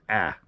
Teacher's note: slightly alter the alpha so it's pronounced a little bit more nasal